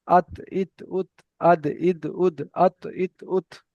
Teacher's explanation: জিভের আগা সামনের উপরে দুই দাঁতের গোড়ার সঙ্গে লাগিয়ে তা, দাল, ত উচ্চারিত হয়।